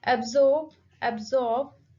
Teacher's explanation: the stress is on second syllable, zorb. Absorb.